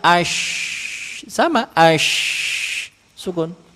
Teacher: makhraj huruf sya adalah ee lidah tengah naik ke langit-langit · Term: syin sukun